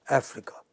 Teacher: this word Africa is marked with a stress on the initial syllable